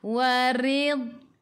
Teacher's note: Warid. Ra baris bawah kena baca dengan nipis.